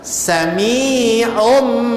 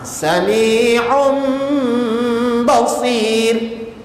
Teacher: seolah-olah ain baris depan masuk pada mim mati. Bunyinya sami'um.